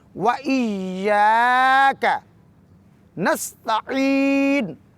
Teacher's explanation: تو لفظ وَإِيَّاكَ نَسْتَعِينُ میں واو کے بعد ایا کی یا مشدد ہے اور یا پہ شد ہے، اس پر زور دیں گے اور اس کو 2 حرکات کے برابر کھینچیں گے · وَإِيَّاكَ نَسْتَعِينُ، نستعین میں یہاں پہ عین ذریعی عین کو وسط حلق سے ادا کرتے ہوئے یا مدہ کو 2 حرکات سے زیادہ کھینچیں گے